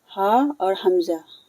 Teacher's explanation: گلے کے نچلے حصے سے یہ دونوں حروف ادا ہوتے ہیں